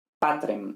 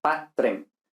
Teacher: Y tenemos T, entonces tenemos una oclusiva seguida de una líquida, una R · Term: muta cum liquida